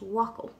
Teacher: After the F is an O, which is a broad vowel, so the BH will be pronounced like a W and not a V, so it's wakal.